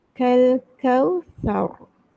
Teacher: Ra ni kena ada getaran.